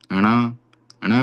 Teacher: ट वर्ग मूर्धा से है। मूर्धा और नासिका से ण का उच्चारण होता है